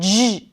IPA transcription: ʒ